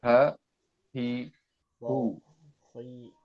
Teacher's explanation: H itu berasal dari pangkal tenggorokan